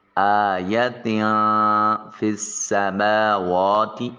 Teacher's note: فا کو سین کے ساتھ ملاتے ہوئے سین کی سیٹی کی آواز آنی چاہیے، حرف صفیریہ ہے۔ · نون تنوین کے بعد فا حرف اخفا ہے، لہٰذا اس نون کو اپنے مخرج میں چھپا کر ادا کریں گے